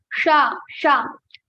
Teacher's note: Our tongue touches our talu to pronounce this sa. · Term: talavyasa